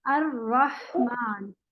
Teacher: रहमान का जो हा है इसमें सिर्फ सांस ही सांस है